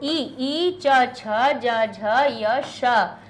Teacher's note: ई च छ ज झ य श, इचू यशाह, ये सब निकलेंगे तालव्याह, तालु से